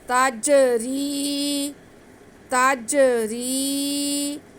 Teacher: جنات تجری، تجری، را کے نیچے زیر یا ساکن، را کو باریک پڑھتے ہوئے ہم کھینچ کے پڑھیں گے کیونکہ اس کے ساتھ را اور یا ساکن ہے۔